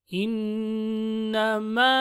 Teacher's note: نون has شدة so we make it غنة within from the nasal we hold it